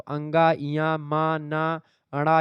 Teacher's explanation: ये पंचमाक्षर हैं अनुनासिक, यानी ये जो है नाक के माध्यम से, थोड़ा नाक और मुंह के माध्यम से बोले जाते हैं, इसीलिए इनको अनुनासिक कहते हैं।